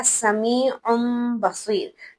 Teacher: नून साकिन और नून तनवीन की पहली सिफत यह है कि हर्फ बा के आने के बाद उनकी आवाज को बदला जाएगा। यानी हम गुनगुनाहट की या नून की आवाज नहीं निकालेंगे बल्कि मीम की आवाज निकालेंगे। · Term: कलब